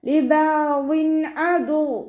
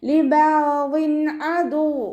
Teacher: തെൻവീനിനെ വ്യക്തമാക്കി മണിക്കാതെ ഉച്ചരിക്കുക കേട്ടോ. ലിബാവിൻ അദു ഇവിടെ തെൻവീനിലുള്ള നൂനിൻ്റെ സൗണ്ടിനെ വ്യക്തമായിട്ട് നമുക്ക് കേൾക്കണം.